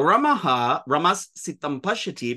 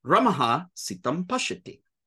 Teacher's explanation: Our sibilants are all unvoiced. When you have this s sound that meets an unvoiced initial, it becomes a mere visarga.